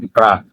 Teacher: praise lightly against the upper mold to guide the air flow a controlled release of air occurs creating a distinct rolling or bouncing sound when you add fata Andra it will be ra and